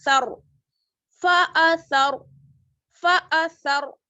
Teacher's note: را ساکن ہے, اس سے پہلے زبر کی حرکت ہے تو یہاں را ساکن موٹا پڑا جائے گا